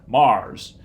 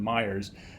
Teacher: And my mom and dad thought they were telling them to go literally to the planet Mars rather than Myers, just because they monophthongized that diphthong